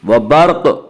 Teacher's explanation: وبرق، قاف حروف مستعلیہ میں سے ہے۔ حروف مستعلیہ 7 ہیں جو ہمیشہ ہر حال میں پر پڑھے جاتے ہیں، اس لیے قاف کو بھی یہاں پر پڑھیں گے